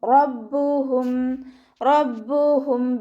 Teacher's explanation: റ ഫതഹ് ആയതുകൊണ്ട് നമ്മൾ ഉയർത്തിയിട്ട് ഉച്ചരിക്കും.